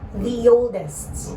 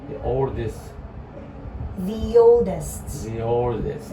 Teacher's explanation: if E followed by another vowel sound, O, you are going to add Y in the middle so that it sounds connecting